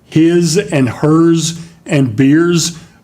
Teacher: on a bunch is the pronunciation of what's a z sound we spell them as s's uh but we say them as z's